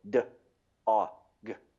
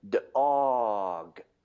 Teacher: choppy blending all the time, where you have a distinct stop between each sound